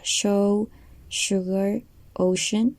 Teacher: we have sh with no vibration